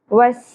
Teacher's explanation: سورة الطارق آیت نمبر 11. وس سین سیٹی کے ساتھ، سین کی زبر کو زیادہ نہیں کھینچنا. وس مائی مد متصل، سبب مدہ حمزہ ایک ہی کلمہ کے اندر آ گیا، 5 الف کے برابر کھینچنا ہے.